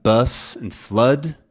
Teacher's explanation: Bus and flood, this sort of back sound, can become a little bit more centralized. Really hard to notice, but bus and flood can happen.